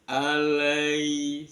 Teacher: Alai di sana ada ya sukun, sebelumnya ada fathah, itu ada matlin, ya-nya dibaca lunak